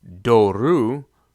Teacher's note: that last syllable becomes a diphthong of Omicron Upsilon which is considered long